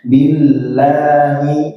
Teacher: lanya tipis ya, karena lafzul jalalah sebelumnya kasroh itu dia lamnya menjadi tipis